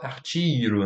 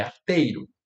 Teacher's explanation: Artiro, não, é arteiro. Então esse E se mantém, ele não alça para I.